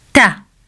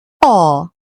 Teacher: raise the tip of the tongue up. Ta. In thaa, you raise all of the tongue up.